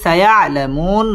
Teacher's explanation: মধ্যে আরজি 3 আলিফ টান দিয়ে নুনের মধ্যে সাকিন করে ওয়াকফ করতে হবে